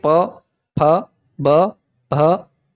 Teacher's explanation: ओष्ठ हो जाएगा, क्योंकि प वर्ग के अंदर जैसे ही प, फ, ब, भ ऐसा उच्चारण करेंगे तो आपके होठ आपस में मिलेंगे, तो इसको बोलने के लिए ओठ का उपयोग होगा